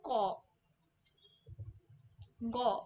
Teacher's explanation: বর্গের প্রথম ও তৃতীয় ধ্বনি উচ্চারণের সময় প্রাণ অর্থাৎ শ্বাসবায়ু জোরে বার হয় না বলে এদের অল্প প্রাণ ধ্বনি বলি